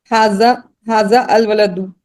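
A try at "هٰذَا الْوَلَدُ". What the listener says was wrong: हाँ, ये मिला के करें, हादा अल वलदू हादल वलद, वो भी सही था। मुरकब तारी पूछ रहे हैं ना, तो पूरा हादल वलदू।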